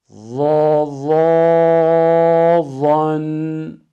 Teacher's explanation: Zo harfinin ıtbak ve istilasını ihmal edersek zel harfine döner.